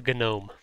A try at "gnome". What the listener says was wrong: A gnome. Why do you pronounce the G? Oh my god, gnome.